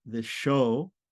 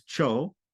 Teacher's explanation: Also this palatal S turns to a palatal CH